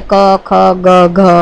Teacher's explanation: ક, ખ, ગ, ઘ એનું ઉચ્ચારણ જીભનો પાછળનો ભાગ ઊંચો થઈ અને કંઠના આગળના ભાગને સ્પર્શે છે, એટલે એને કંઠ્ય વ્યંજનો કહેવામાં આવે છે.